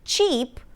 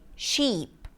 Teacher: Arabic speakers might replace the ch sound with sh and say sheep.